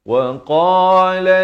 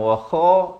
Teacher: Qaf ini di pangkal lidah.